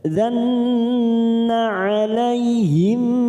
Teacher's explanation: mim sukun bertemu mim, idgham mimi, kita tekan 3 ketuk